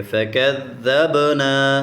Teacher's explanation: با کے اوپر قلقلہ کریں گے